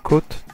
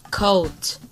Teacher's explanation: Hear how the first one is just one single sound, but the second one is two?